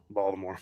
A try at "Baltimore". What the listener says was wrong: Yeah, you don't say the T. Don't say the T, man.